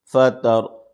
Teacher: را ساکنہ سے پہلے زبر ہے تو اس لیے را کو پر پڑھیں گے